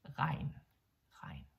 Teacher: As you can hear, we don't really say the G, so it's just regn, regn, yeah?